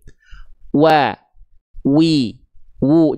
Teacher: Di mana tempat keluar huruf waw? Kita lihat, dia dilafalkan dari yang namanya asyafatain. Asyafatain itu apa? Asyafatain itu artinya adalah kedua bibir. Kedua bibirnya diapain?